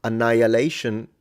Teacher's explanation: Interestingly enough, annihilation, you don't pronounce the H. You don't say annihilation in English. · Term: mute hes